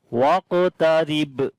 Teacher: on the ba we make again qalqala, and this is strong qalqala now here. · ra we read in light sound here, and ra has a kasra under it.